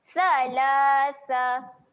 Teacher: Sa kena jaga makhrajnya, keluarkan lidah. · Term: huruf sa